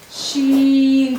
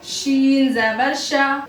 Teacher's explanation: शीन भी मुस्तफीला में से है, बारीक पढ़ेंगे शीन।